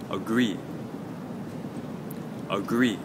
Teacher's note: for agree we'll put the stress on the second syllable